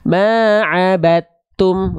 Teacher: dalnya sudah betul-betul enggak ada langsung masuk ke ta makanya tanya ditandai dengan tanda tasydid jadi seolah kita langsung baca · langsung masuk ke ta makanya tanya ditandai dengan tanda tasydid jadi seolah kita langsung baca dari BA langsung ke ta fokusnya dalnya dianggap tak ada sudah diidumkan sudah dimasukkan ke huruf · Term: idg mutajanisan shogir